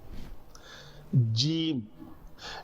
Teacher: جیم، یہ جیم جو ہے زبان کا پیچھے والا حصہ جو لام کے بہت دور ہے، لام کے لیے یہ دیکھیں آگے زبان آگے والا حصہ ٹکرا رہا ہے، لیکن جیم کے لیے زبان کا جو اوپر والا حصہ ہے وہ بالمقابل اوپر تالو سے لگ رہا ہے